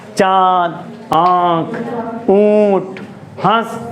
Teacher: इसमें हम जब भी कोई शब्द बोलेंगे तो हमारी नाक और मुख दोनों से वायु बाहर आएगी। चांद, आँख, ऊँट, हंस, जो भी शब्द बोलेंगे दोनों वायु बाहर आएगी, और दोनों से हमारी साउंड भी प्रोनाउंस होगी, दोनों जगह से आवाज़ निकलेगी, नाक से और मुंह से, दोनों जगह से। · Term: अनुनासिक